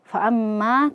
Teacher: mim yang bertasydid di sini ghunah musyaddadah. Jadi dibaca panjang dua harakat.